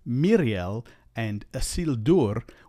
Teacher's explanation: like you normally would and so it's mirel and Aur where the E and the U keep their sounds even though they're followed by the r rolling the r trilling the r can help with that quite